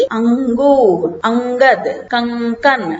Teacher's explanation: इसी प्रकार इसकी ध्वनि नाक से निकलती है। अनुस्वार की ध्वनि नाक से निकलती है